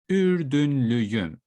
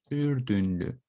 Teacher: the shape of your mouth keeps the same, because the sounds that I have in the word Ürdünlü are round vowels, Ürdünlü. So basically, it continues with a round vowel as well, Ürdünlüyüm.